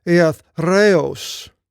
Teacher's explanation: There's the va sound with the, not a b, a va. And then the re is with the r. You have to roll the r.